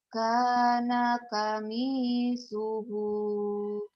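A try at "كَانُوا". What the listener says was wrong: Kana suhu. Bukan kami, komi.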